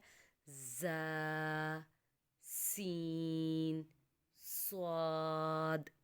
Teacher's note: جیسے وہ لفظ نرمی سے ادا کرنے ہیں، ایسے ان لفظوں میں تھوڑی سی سختی پیدا کریں گے تو سیٹی نکلے گی. ان لفظوں کو ادا کرتے ہوئے سیٹی کی آواز آتی ہے